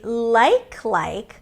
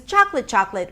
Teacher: When I use lexical cloning or reduplication, I put the stress on the first word and I say it significantly higher in pitch. I mean higher in pitch, higher in pitch, not just like slightly higher in pitch.